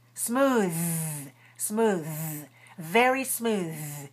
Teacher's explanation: listen to the ending it must be voiced feel that vibration on your tongue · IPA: ð